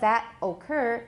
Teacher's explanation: we've got a T there, so it becomes a tap